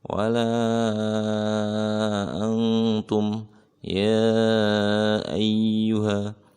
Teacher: Ya ayyuha itu panjang 4 harokat. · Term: mad jaiz munfasil